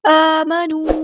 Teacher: ان الذین، ذال کو ہم نے باریک اور نرمی سے ادا کرنا ہے، یا مد آ گئی ہے تو مد اصلی کریں گے، نون کے زبر کو لمبا نہیں کریں گے۔ آمنو، الف پہ کھڑا زبر ہے تو مد اصلی کریں گے، واؤ مد آ گیا ہے، یہاں پہ بھی مد اصلی ہوگی